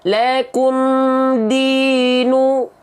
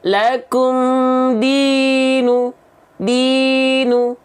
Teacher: Cara menyempurnakan harokat dhamma bunyi vokal u itu dengan cara maju bibirnya sahabat Quran sekalian. Maka ketika saya izin contohkan, tak ada dhammah yang tak maju kalau pengen sempurna, ya.